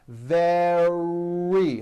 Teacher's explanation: the r sound is strong and your lips are coming forward your tongue is back and you push out the r